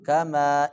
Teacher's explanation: انو مینو یہاں پہ جھٹکا ماریں گے، جھٹکا انو مینو کما، اس کے اوپر بھی چھوٹا مد ہے، بڑے مد کی طرح اس کو لمبا نہیں کرنا، چھوٹا مد ہے